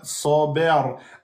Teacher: Donc là, sad, fatha emphatique. Ba, fatha aminci. Le ra, il devient soukoun.